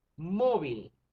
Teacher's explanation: lleva la sílaba tónica en la penúltima sílaba